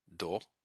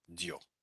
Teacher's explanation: the soft sign or these soft vowels basically cause the consonant that comes before it to be softer, palatalized